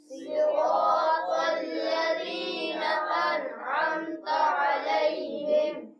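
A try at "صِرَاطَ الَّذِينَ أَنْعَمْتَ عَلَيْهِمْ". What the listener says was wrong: یہاں پر صراط ال ہے، صحیح صوت سے ہے، سین سے نہیں ہے. صراط الذین انعمت علیہم.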